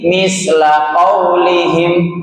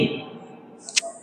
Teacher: Sasisu at, ujung lidah bertemu ujung gigi di atas. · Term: huruf sa